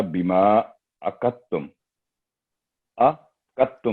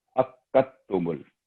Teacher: काफ पर तशदीद है, पहले आइन से काफ को हिट करेंगे